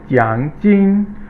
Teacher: 奖 is third tone, and 金 is first tone